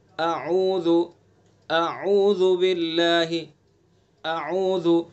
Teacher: حمزہ کو سینے کی طرف سے نکالنا ہے اور عین کو حلق کے بیچ میں سے نکالنا ہے. تو دونوں میں فرق پیدا کرنا ہے.